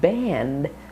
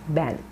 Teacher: Make sure you're not saying ban and not voicing the D, or bent or banth. Make sure there's actually a D sound, band, and it's long and flat.